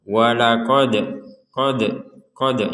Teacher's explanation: Dal sukun ini kita baca dengan pantulan walaqod qod qod jadi qod seperti itu tidak sekedar walaqod walaqod